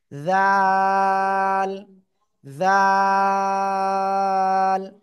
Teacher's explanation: উপরে দুই দাঁতের আগায় লাগিয়ে তিন আলিফ টেনে উচ্চারণ করতে হবে